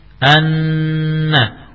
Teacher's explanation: Dengungnya suara pada nun dan mim. Ya, suara dengung tersebut muncul pada pangkal hidung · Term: ghunnah